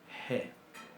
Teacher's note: Es una fricativa uvular sorda. G. Bien.